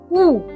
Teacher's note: যখন আমরা উ বলছি ঠোটটা প্রায় জুড়ে যাচ্ছে